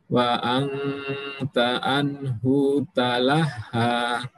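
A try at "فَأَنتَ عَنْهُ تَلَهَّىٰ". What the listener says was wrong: Baik, di anhu, hu-nya pendek.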